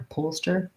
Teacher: the h being there means that the o kind of starts the stressed syllable